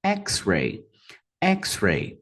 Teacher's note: Duas sílabas, X-ray. X-ray, primeira sílaba também a mais forte